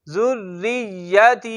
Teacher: यहां पर रा को हमने बारीक पढ़ना है क्योंकि इसके नीचे जेर है